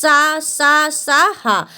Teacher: देखो आप अगर बोलेंगे सा, एकदम जीभ और दांतों में घर्षण करके निकलेगी। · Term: ऊष्म संघर्षी व्यंजन